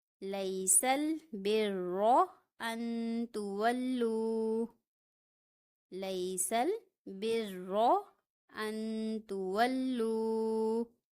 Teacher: را مشدد ہے، اس لیے یہاں پہ را کو پر پڑھا جائے گا یعنی کہ موٹا پڑھا جائے گا